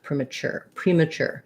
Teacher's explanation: premature has the stress on chur and that sounds like a ch sound and an ur sure